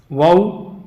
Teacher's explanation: वऊ जब वऊ हम पढ़ते हैं तो दोनों होठों की गुलाई जब दोनों होठ गोल हो जाते हैं तो तब वऊ पूरा और बराबर अदा होता है